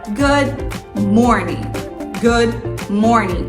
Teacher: esse D ele é quase não falado então é bem suave